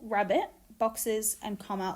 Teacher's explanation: rabbit, boxes, and comma all have schwa in the second syllable.